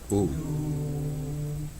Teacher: the U sound becomes elongated to ooh, 2 beats, at least 2 beats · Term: rule of dipthong